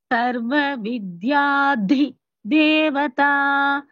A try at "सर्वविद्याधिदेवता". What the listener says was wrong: It is a single word, no need to take break. Sarva vidyadhidevata is equal to Sarva vidyadhidevata. There is no pause after vidyadhi. Sarva vidyadhidevata.